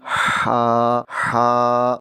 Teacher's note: سب سے پہلے سبحانہ، یہاں پر جو ہا ہے یہ ہا حلقی ہے، بھاری ہا نہیں ہے۔ اس کو جب ادا کرتے ہیں تو حلق سے ادا کرتے ہیں، اس میں سانس کی آواز آنی چاہیے۔ مثلا ہا، تو ہا کی ادائیگی کرتے ہوئے سانس کی آواز دینی ہے، اور اس ہا کے اوپر کھڑا زبر ہے، اس کو ایک الف کے برابر لمبا کر کے پڑھیں گے۔